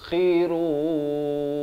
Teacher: kha pula di hujung kerongkong